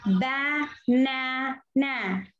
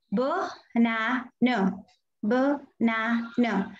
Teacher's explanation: It's not ba na. Only the middle A gives a sound, but the first A and the last A they go unstressed. That means they simply say b na no, b na no. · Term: schwa